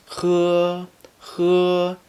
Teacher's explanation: When pronouncing 喝, you should always have a noticeable friction in your throat.